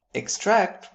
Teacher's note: with the stress on the second syllable would give us the verb